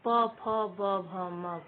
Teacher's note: प वर्ग का उच्चारण स्थान ओष्ठ है